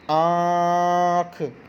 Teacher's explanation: अनुनासिक का जो उच्चारण होता है जब इसको हम बोलते हैं तो इसका उच्चारण नाक और मुख दोनों से होता है